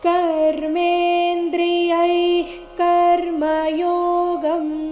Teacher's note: [ಸಂಗೀತ] ನಿಯಮ್ಯಾರಭತೆರ್ಜುನ ನಿಯಮ್ಯಾರಭತೆ ಅರ್ಜುನ ಕರ್ಮೇಂದ್ರಿಯ [ಸಂಗೀತ] ಕರ್ಮಯೋಗಂ ಇಲ್ಲಿ ಯೈ ನಂತರ ಇರೋ ವಿಸರ್ಗದ ಉಚ್ಚಾರಣೆ ಅರ್ಧ ಕ ರೀತಿ ಬರಬೇಕು ಯಾಕಂದ್ರೆ ಮುಂದಿನ ಶಬ್ದ ಕರ್ಮಯೋಗಂ ಕ ದಿಂದ ಶುರುವಾಗ್ತಾ ಇದೆ